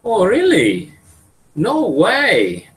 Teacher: This is rising and showing surprise.